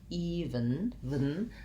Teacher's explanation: Even has first syllable stress, so this E actually says the E sound. And then we either have a schwa or almost no vowel sound in the second syllable